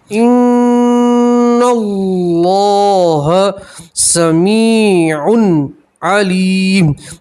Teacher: اللہ کے لام سے پہلے زبر ہے، اللہ کا لام پور پڑھیں گے، موٹا پڑھیں گے. ان اللہ سمیع علیم، یہاں تنوین کا اظہار ہے، آپ یہاں گننا نہیں کریں گے، ٹھیک ہے، اور 2 پیش کی تنوین پہ وقف کریں گے تو 2 پیش کی تنوین کا جزم سے بدلیں گے.